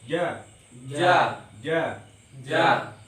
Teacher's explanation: kalau ja itu sifatnya tidak boleh ada desis. Misalnya kalau orang Jawa itu biasanya ja, ja.